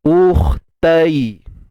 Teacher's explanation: Hamzah pada depan u, muncung bibirlah u kan. Kemudian matikan kha. Kha tebal, angkat pangkal lidah.